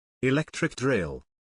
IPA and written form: ɪˈlek.trɪk ˌdrɪl (Electric Drill)